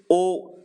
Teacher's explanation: उसके बाद आप देखेंगे तो ओ, अब बोलिए ओ, तो पीछे से आ रहा है ओ, फिर ओ, दोनों पीछे से बोले जाते हैं, छोटा ओ भी और बड़ा ओ भी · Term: पश्च स्वर